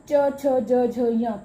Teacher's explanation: कंठ के थोड़ा आगे और मुख के ऊपर वाली छत को जो छुआ है, तो उससे च छ ज झ य पांचों वर्ण वहां से निकले। तो छत जो है वाला भाग जो है वो तालु कहलाता है।